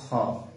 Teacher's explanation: জিহ্বার গোড়া থেকে আদায় হয়